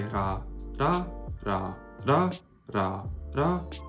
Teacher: So you're going up a pitch when you say it. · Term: pitch accent